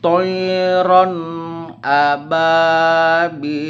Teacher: Hukum izhar ini tanwin dibaca jelas apabila bertemu dengan huruf A.